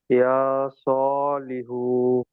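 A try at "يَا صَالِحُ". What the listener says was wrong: হুতে টান হয়ে যাচ্ছে, হুতে টান হবে না, আপনি এখানে পড়ছেন হার উপরে পেশ এসছে, পেশটি হলো হারাকাত, হারাকাতের পরে তাড়াতাড়ি পড়তে হয়, টান দেওয়া নিষেধ বলে আপনি পড়ছেন ইয়া সলিহু, তাহলে চলবে না।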